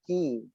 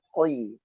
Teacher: sifat huruf qaf isti'la. Lidah kita naik maka suara jadi tebal.